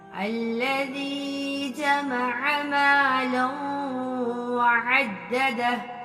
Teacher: لام کو واو سے ملا کے غنہ کرنا ہے